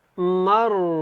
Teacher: او کالذی مر علی قریۃ، مر، را کو زیادہ لمبا نہیں کریں گے اور اس کو موٹا پڑھیں گے، را کے اوپر جو ہے وہ زبر ہے، اور اعلیٰ جو یہاں پہ عین اور لام یہاں پہ نظر آ رہے ہیں، لام کے اوپر کھڑی زبر ہے تو اس کو آپ نے لمبا کرنا ہے، تھوڑا سا کھڑا کر کے ادا کرنا ہے۔